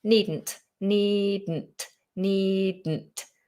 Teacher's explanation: just have to let it explode into the nose · With the word needn't, we're not releasing it in the same way as we normally would. We're holding the tongue, needn't, and we're almost allowing the explosion to happen backwards or sideways.